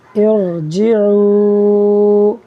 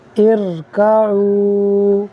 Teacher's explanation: را ساکن سے پہلے عارضی زیر ہے، را کو پر پڑھیں گے۔